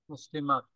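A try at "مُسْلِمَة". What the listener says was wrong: মুসলিমাহ, এখানে একটা হায়ের উপর একটা জজম আছে, এভাবে পড়তে হয়, তাই না?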